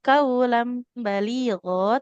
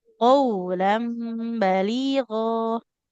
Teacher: Yang pertama dia qofnya enggak boleh jadi k ya. Tidak kaulam baligho, tapi qulam baligho.